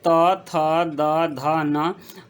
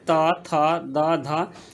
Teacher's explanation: इसके उच्चारण के लिए जीभ दांत में स्पर्श करता है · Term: दंत व्यंजन